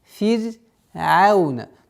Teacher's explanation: То есть все звуки здесь в этом слове фир'аун, все мягкие.